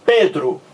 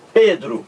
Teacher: Pedro, o P aqui, ó, é uma consoante bilabial, porque você encosta o lábio superior no inferior